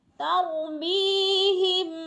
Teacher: یا ساکن سے پہلے میم کے نیچے زیر ہے تو یا مدہ کو کھینچ کر پڑھنا ہے